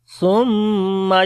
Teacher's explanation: sa we read in soft sound, on the meme we make gunna. There is shadda sign, that's why.